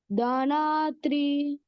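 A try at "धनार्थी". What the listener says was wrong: Not three, T only. Dhanarthi.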